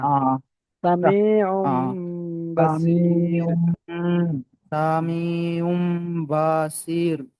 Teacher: আইনের ওপরে তানবিন এসেছে, তানবিনের পরে বা এসেছে, তাই তানবিনকে মিমের দ্বারাই পরিবর্তন করে একালে গুণনা করে পড়তে হবে